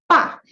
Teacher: Like to produce the B, you have to go, bah! You got to close those lips tight and you open them out, shoot it open to puff that air out to produce that B sound.